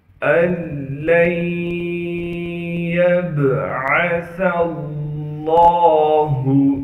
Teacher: ادغام کے قاعدے سے اس نون کو ہم ختم کر دیں گے۔ نون ساکن کے بعد حروف یرملون میں سے لام آ گیا، لہٰذا اب اس نون کو ہم لام میں اس کا ادغام کر دیں گے، اس کو یعنی لام میں بالکل چھپا دیں گے۔ · لام پر تشدید ہونے کی وجہ سے یہاں پر تھوڑا سا ٹھہراؤ رکھیں گے